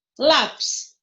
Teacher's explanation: É a penúltima sílaba mais forte. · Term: paroxítona